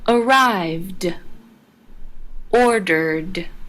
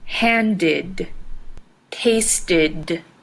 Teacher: The ED in handed and tasted ended with an id sound.